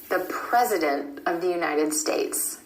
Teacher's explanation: that T is held after the N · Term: held T